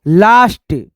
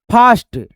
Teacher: ए को जो है ना हम लोग उच्चारण करेंगे आ से।